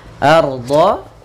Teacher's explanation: Itu alif lam yang ditulis dan dibaca dengan jelas. Arda, ro-nya tebal yaitu ra tafkhim